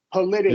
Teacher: You're not releasing the K. You're stopping. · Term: stop K